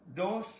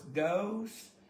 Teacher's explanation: just real short O. Dos, it's not an Oklahoma O.